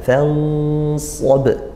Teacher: Nah, ini nun sukun bertemu shad, itu hukumnya ikhfa haqiqi. Nah, langsung menuju ke makhrajnya shad, nunnya tetap didengungkan